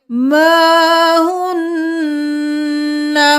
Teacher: نسائہم ما ہن، ما ہن نہیں کریں گے، الف مدہ ہے، ایک الف کے برابر کھینچیں گے۔ ما ہن، پھر نون پر تشدید ہے، غنہ۔